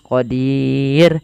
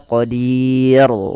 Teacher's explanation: ro di sini kita hukum dengan ro yang tipis · Ra di sini kita hukumi dengan ra yang tipis. Kenapa? Karena huruf ra-nya dimatikan dan sebelumnya ada huruf ya dan ada huruf kasrah.